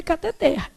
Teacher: A última sílaba é que é tônica. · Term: Oxítona